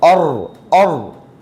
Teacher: റായിന് സുക്കൂൻ, അതിന് മുമ്പുള്ള അക്ഷരത്തിന് ഫത്ഹും വന്നാൽ തഫ്ഹീമാണ്, ഖനപ്പിച്ച് വരേണ്ട സമയമാണ്.